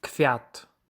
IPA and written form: kfʲat (kwiat)